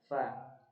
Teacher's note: fa dia harus ada mahmusnya, harus ada desisan angin. Fa. Kemudian cara bacanya, bibir, bagian bibir yang basah ini dia bertemu dengan ujung gigi seri atas ya, fa, dan dia keluar angin, desisan, fa ya.